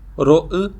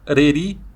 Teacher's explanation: O R tem sempre o som brando, é sempre o tepe alveolar em todos os contextos.